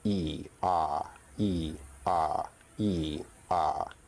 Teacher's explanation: In terms of height, vowels are either considered high, mid, or low. E is an example of a high vowel, and Ah is an example of a low vowel. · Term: vowel height